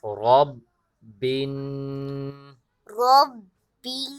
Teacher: با پہ ہم نے سختی کی اور نون کو پر غنہ کیا